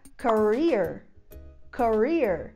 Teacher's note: Então o stress dessa palavra, sílaba tônica, é no final.